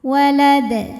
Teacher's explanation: maka cara bacanya dipantulkan dengan pantulan yang lebih terdengar lebih besar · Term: Qalqalah Sugra